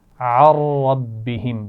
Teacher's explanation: عن ربہم بغیر غنہ کے پڑھیں گے، را سے ملائیں گے لیکن غنہ نہیں ہوگا